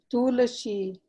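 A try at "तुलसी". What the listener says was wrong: Tulasi, not Tulasi. Sakara. It is Dantya Sakara, Tulasi.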